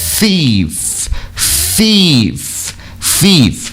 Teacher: é língua na pontinha do dente e soltando o ar aqui nesse caso, sem vibrar a corda vocal.